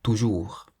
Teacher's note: we say toujours, stressing the last part of the word rather than toujours